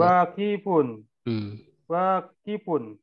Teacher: Wanya yang panjang, Pak. Ki-nya pendek.